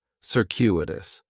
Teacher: Circuitous has 4 syllables, and there's a few things going on with the pronunciation. In the first syllable, that C is going to have more of an S sound